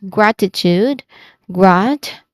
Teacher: Grat, which is the first syllable. This is the stressed syllable also.